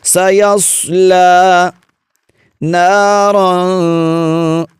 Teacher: صاد حروف مستعلیہ میں سے ہے جو 7 حروف ہمیشہ موٹے پڑھے جاتے ہیں، تو یہاں پر آپ نے صاد کو خوب موٹا کر کے پڑھنا ہے۔